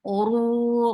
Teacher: The sound is short. Oru, ra is heavy. Make it 4 counts long because this is munfasil, mad munfasil, jaiz.